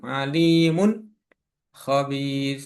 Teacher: Jadi nunnya jelas ya dan tidak mendenggung.